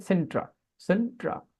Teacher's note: আপনি ব্রিটিশ উচ্চারণ যদি মেনে চলেন তাহলে আপনাকে আর না বলে বলতে হবে আ